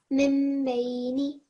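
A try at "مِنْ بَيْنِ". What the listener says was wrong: Much better, well done.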